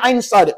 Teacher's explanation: bila sebut sad tadi di hujung tu ada lantunan